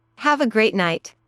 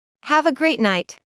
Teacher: make the intonation for the word great a little higher